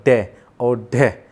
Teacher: वायु हमारे मुख से निकलती है, हमारे गले से बाहर निकलती हुई और हमारे मूर्धन्य से टकराती है। जैसे जब भी हम इनका उच्चारण करते हैं तो जैसे हमने बोला डे और ढे, तो हमारी जो जीभ है वो मूर्धन्य से टकराई और एकदम से नीचे आ जाती है। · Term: उक्षिप्त व्यंजन